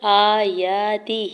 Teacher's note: حمزہ کے اوپر کھڑی زبر ہے، یا کے اوپر بھی کھڑی زبر ہے، دو حرکت کھینچ کے ادا کریں گے